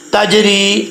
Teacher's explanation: جیم کے اوپر قلقلہ ہو رہا ہے کیونکہ یہ حروف قلقلہ میں سے ہے جیم